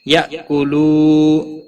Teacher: یا حمزہ ساکن کو تھوڑا جھٹکے کے ساتھ ادا کریں۔ کولو واو مدہ ہے، ایک الف کے برابر کھینچ کر پڑھیں گے۔